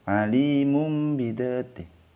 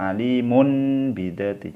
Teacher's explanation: Harus seolah-olah ada mim mati, karena ini bacaan iqlab digantikan dengan mim mati.